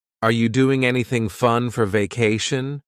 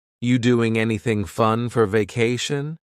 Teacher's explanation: we're going to start this question with just you which is reduced to Yi